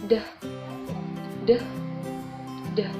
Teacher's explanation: Konsonan apico-alveolar hambat bersuara